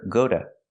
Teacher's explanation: But after go, the T is between vowels, so you hear duh.